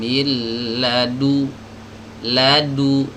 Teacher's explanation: Jadi kalau nun mati ketemu dengan huruf lam, maka nunnya ini tidak dibaca. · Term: idgham bila gunnah